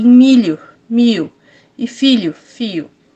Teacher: Esse dialeto possui adaptações de fonemas no dígrafo LH, que são pronunciados com som de I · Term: dialeto caipira